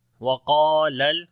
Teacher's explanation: قاف اور الف دونوں کو موٹا پڑھیں گے اور لمبا بھی کریں گے قاف کو، یہاں پر الف مدہ ہے۔